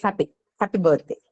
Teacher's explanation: The thing is, when you say the word happy in English, this may not be distinct to speakers of English from India and, Asian countries. But if you speak one of the varieties of English that's spoken in and around UK, they do not completely articulate that E sound at the end of happy, right? So it's happy birthday. · they do not completely articulate that e sound at the end of happy right so it's happy happy birthday it's so slightly articulated that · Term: third kind of E, third kind of e